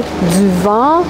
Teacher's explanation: So the nasal vowels are more nasalized in Quebec and in Canada.